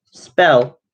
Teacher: the P in spell, bell, is unaspirated.